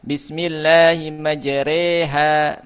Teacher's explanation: Lafaz majreha dibaca dengan imalah bunyi e seperti dalam kata sore surat hud ayat 41 ya. Imalah itu dia e miring gitu ya bunyi.